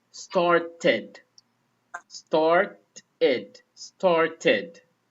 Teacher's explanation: we pronounce it as id, and this when the word has T or D at the end